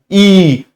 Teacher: इ तो जीभ जो है आगे से काम करती है। इ ए जो होता है इसके लिए जीभ का जीवा का अगला हिस्सा काम करता है।